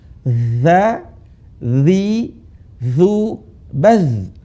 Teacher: Za ujung lisan ketemu gigi di atas.